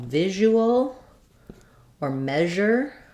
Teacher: I will rewrite this as ZH because it's the same as the SH sound, but my voice is on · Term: zh sound